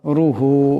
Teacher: এখানে রা পেশ আছে আওয়াজটা মোটা করে করতে হবে